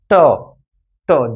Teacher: প্রত্যেকটা মূর্ধন্যকে আঘাত করতেছে। মুর্দাকে আঘাত করতেছে। এজন্য এটাকে বলব আমরা মূর্ধন্য ধ্বনি।